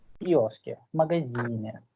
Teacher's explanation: Instead of v, it's f, f. The half sound of f.